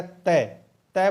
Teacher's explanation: जो जीभ है वो दांत के टकरा रही है